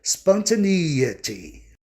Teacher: Para você ouvir a palavra de forma proparoxítona, tem que ter o som I, bem forte